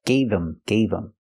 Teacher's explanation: the H in him is silent because the word's not stressed